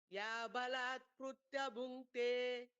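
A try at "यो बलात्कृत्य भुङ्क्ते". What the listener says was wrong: It's not Krutya, it's actually Ru. Kritya Bhunkte. Yabhalat Kritya Bhunkte.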